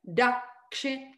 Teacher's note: You have to stay a half matra on the kakara.